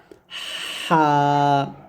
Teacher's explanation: পার্থক্য হচ্ছে যখন আপনি এই অক্ষরটা উচ্চারণ করবেন আপনার গলার মাঝ থেকে গলার মাঝখান থেকে বলতে হবে চাপ দিয়ে